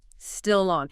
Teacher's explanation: That final consonant sound naturally attaches to the following vowel sound. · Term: Consonant linking to a vowel